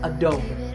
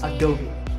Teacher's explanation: that E at the end is not silent. It should be said as an E sound, so it's Adobe.